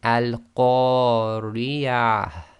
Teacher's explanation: subtle sometimes you can hardly hear the reciters doing this but effectively you've got to have a slight ah sound right at the end